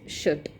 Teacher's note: they don't pronounce the r sound because it is coming before the consonant sound t. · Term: drop r sound